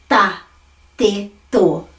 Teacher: I'm flattening my T and making it at the top of my palate going ta, te, to.